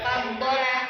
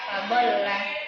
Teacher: Sini ada lam berharakat sukun dan lam berharakat fathah. Cara membacanya ditekan. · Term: tasdid